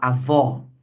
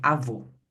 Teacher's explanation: Ambos marcam a sílaba tônica, porém o agudo ele vai marcar o som aberto com avó e o circunflexo vai marcar o som fechado como em avô